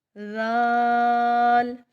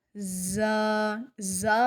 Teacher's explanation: زال کو بھی سا کی طرح نرم ادا کریں گے اور زا کی آواز نہیں آئے گی، زال اور زا کو ادا کرتے ہوئے فرق کریں گے۔